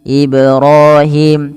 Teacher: pantulkan pada lafal bacaan Ibrahim karena ada bacaan qalqalah, yaitu ketika huruf-huruf 5 yang 5 ini ba, jim, dal, ta, dan qaf, kelima huruf ini berharokat sukun, maka diperlukan dipantulkan ya, maka harus dipantulkan.